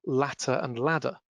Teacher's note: The between vowel T is often realized as a voiced alveolar tap.